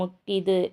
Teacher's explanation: ஆயுத எழுத்து தனக்குரிய அரை மாத்திரை அளவுல இருந்து குறைஞ்சு கால் மாத்திரை அளவுல தான் ஒலிக்குது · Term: ஆயுத குறுக்கம்